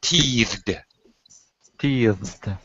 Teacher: So after voiced sounds, any voiced sound at the end of a word, when we add ed to make it a past tense, it just sounds like a D stuck D. on the end of the word.